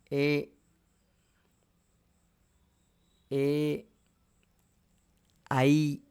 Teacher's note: ఏ, ఏ, ఐ ఇవి ఈ కంఠాన్ని కానీ తాళువులను కానీ రెండింటిని ఉపయోగించి పలకాలి. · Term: కంఠ తాళవ్యౌ వర్ణౌ